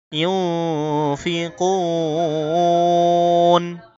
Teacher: নুন সাকিনের পরে ফা এসেছে, ইখফার গুন্না করতে হবে